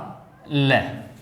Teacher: पार्श्विक ल, जब उच्चारण करते हैं ल का तो जीभ के दोनों ओर बगल से वायु निकलती है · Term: पार्श्विक व्यंजन